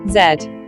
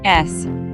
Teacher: fingers upon your voice box and saying z and s repeatedly you should feel vibrations against your finger when saying zed but no vibrations when saying s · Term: voiced sounds